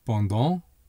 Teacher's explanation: Notice that the final t is silent.